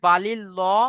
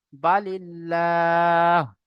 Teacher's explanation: কেউ যদি বা পড়ে বালিল ল, তাহলে সেটা ভুল হবে, গলত হবে, ঠিক আছে। তাহলে আল্লাহ শব্দের লামের আগে যদি বা জের থাকে, তাহলে আল্লাহ শব্দের লামকে বারিক করে পড়তে হবে, অর্থাৎ লা, বালিল্লাহ।